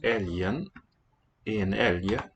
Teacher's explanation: Note the pronunciation of the G, it's a y sound in many cases, not always.